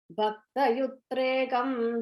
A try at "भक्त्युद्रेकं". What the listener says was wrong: It's not Bhakta, and the tha is not a full tha, it's a half tha. So Bhaktyudrekam.